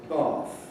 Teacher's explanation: Received pronunciation, and the south of England in general has undergone a lengthening of a before voiceless fricatives, so that rather than the historical bath, we say bath.